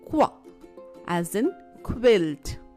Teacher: Qua is composed of two sounds, K and W.